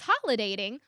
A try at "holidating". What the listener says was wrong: Yeah, you said holiday.